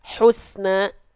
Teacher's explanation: kenapa dia harus ee dilafalkan senyum lagi karena huruf Sin adalah huruf yang tipis nah ketika huruf tipis didahului oleh